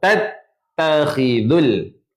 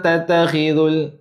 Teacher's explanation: Ta ni ada tanda tasydid ataupun syaddah. Maka tuan-puan kena tekan kat ta tu.